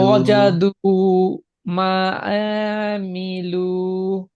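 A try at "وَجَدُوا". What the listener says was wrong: আতে টান নাই, আবার পড়ো।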